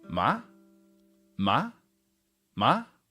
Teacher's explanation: tone it should sound like this ma ma ma straight up starts from your normal speaking voice and go straight up to First tone